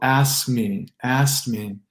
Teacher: you don't hear the K in the past tense of ask when you put another consonant after it. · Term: K sandwich